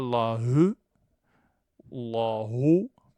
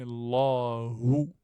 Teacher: je ne dis pas la he, la ho, mais Allahu, avec un ou français